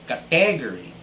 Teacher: category so the stress should be on the first syllable and most people in the philippines would pronounce this as category putting the stress on the second syllable